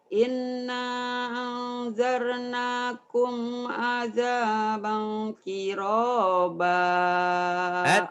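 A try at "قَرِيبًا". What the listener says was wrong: Qariba, terbalik.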